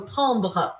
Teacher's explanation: meio que o último som que eu escuto é o R e não o E. Não falo prendre, né?